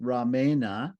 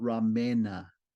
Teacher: that R in the beginning of Rama is itself a cerebral type letter and therefore it changes the dental end to a cerebral end